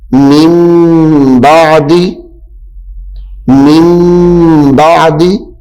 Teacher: حرف با آ جائے تو نون کو میم سے بدل کر پڑھیں گے. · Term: اقلاب